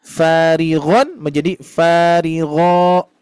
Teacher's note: huruf ghain itu isti'la, tebal. Makanya bunyinya kalau kita perhatikan, kalau kita dengar seperti bunyi o ya.